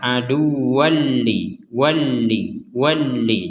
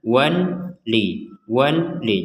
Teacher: adu Jibril ada tanwin di sini atau fathatain bertemu dengan lam maka kita memasukkan tanwin ini kepada lam